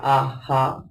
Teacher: Donc ici, dans par exemple, le A, il y a seulement une différence dans la longueur du son. Donc le premier A est un son court, le deuxième A est un son long.